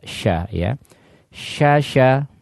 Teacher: Di mana sini adalah dia keluar dari wasatul lisan atau bagian tengah dari lisan. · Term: shin